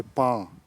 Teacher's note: when you say pa, ground, the vowel is nasalized. So these two words are kept distinctive by this small feature, prosodic feature called nasalization.